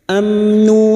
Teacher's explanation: mim sukun dibaca jelas tanpa mendengung amnu wahum wahum mim sukun bertemu mim idgam Mimi masuk pada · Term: iidhar syafawi